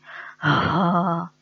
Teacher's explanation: ہا جو ہے وہ ہمارے حلق کے 3 حصے ہیں، ٹھیک ہے، اپر، مڈل اینڈ لوئسٹ. ہا جو ہے وہ ہمارے حلق کے آخری حصے سے، لوئسٹ پارٹ سے ادا ہوتا ہے